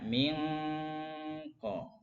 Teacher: Tapi karena idghamnya naqis, maka masih ada dengungnya.